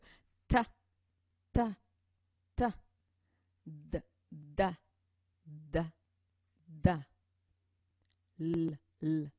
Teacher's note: c'est la langue qui frappe donc le derrière des dents supérieures